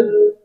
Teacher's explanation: এখানে কফ কলকলার হরফ উপরের দিকে ধাবিত করে ধাক্কা দিয়ে উচ্চারণ করব।